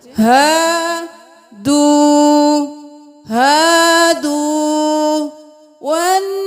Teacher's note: نون پہ تشدید ہے غنہ کریں، دیر لگائیں.